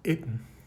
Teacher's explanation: that double N after a diphthong like EI in a word like itten is pronounced TN in modern Icelandic